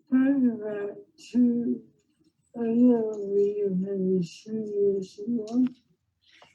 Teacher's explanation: the quality of her voice is really soft the voice is lower there's a little bit of a hyper nasality component to it